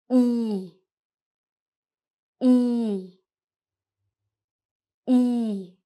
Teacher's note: you stretch out your lips a little more and it's a long sound. E. Your lips should feel a little tighter too. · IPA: /i:/